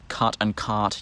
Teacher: in Australian English we say we say um cut and cart using the same vowel but just with a vowel length distinction